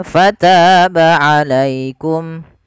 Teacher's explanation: ta di sini ada mat tabi'i, yaitu bertemu dengan alif, panjangnya 2 harakat.